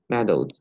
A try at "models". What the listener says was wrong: Model, not medal, model.